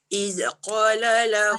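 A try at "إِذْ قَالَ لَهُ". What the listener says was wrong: Jaga Zal. Dia tak boleh izqa. Satu kesilapan dia lidah tak keluar. Kedua dia jadi lantunan. Iz qala.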